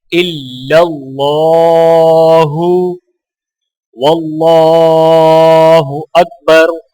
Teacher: اللہ کے لام کو موٹا پڑھا جائے گا اور ایک الف کے برابر کھینچ کر پڑھا جائے گا